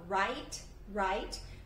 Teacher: cuidado para não falar write, que é algo bem comum de colocar esse sonzinho do i no final. Então, a gente fala write.